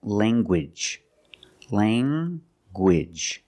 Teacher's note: You have the nasal sound, lang, and the hard g, gwidge.